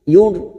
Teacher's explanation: Ada huruf ra sukun yang didahului dhammah, kita baca tafkhim atau tebal dengan posisi bibir kita cemberut. Yur karena huruf tebal, karena dibaca tafkhim maka ciri-ciri bibir kita seperti cemberut.